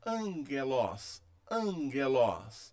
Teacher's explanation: o primeiro gama recebe o som de N na leitura